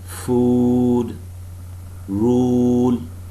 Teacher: the back of the tongue is raised relaxedly from the closest position and is somewhat advanced from the true back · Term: long vowel sounds